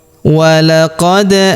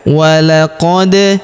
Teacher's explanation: huruf da berharokat sukun maka kita pantulkan atau kita qalqalahkan ya.